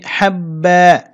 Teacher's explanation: ওয়াকফ করলে বাতে এক আলিফ টানবো